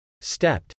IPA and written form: stˈɛpt (stepped)